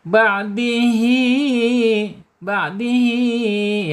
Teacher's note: ada mad silah qasirah ya. Panjangnya dua harakat.